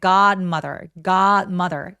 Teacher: god mother요 d는 디귿 받침 정도로 가볍게 처리하고 바로 m으로 넘어가 주세요. 갓 할 때 너무 빠르게 발음하지 않고 더 길게 · d는 디귿 받침 정도로 가볍게 처리하고 바로 m으로 넘어가 주세요. 갓 할 때 너무 빠르게 발음하지 않고 더 길게 god mother god mother 요렇게 소리 내기.